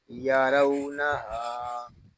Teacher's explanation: ہاں کو ایک الف تک کھینچ کے پڑھیں گے کیونکہ یہاں الف مدہ ہو رہا ہے